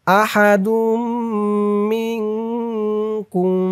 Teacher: আহাদুম তানবিনের পরে তাসদিদ ওলা মিম আসছে, ইদগামে বা গুন্নাহ হবে।